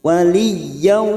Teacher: Waliyan fathah tanwin pada huruf ya bertemu wawu idgham biguna siap masuk dan mendengung masuk ke huruf berikutnya yaitu huruf wawu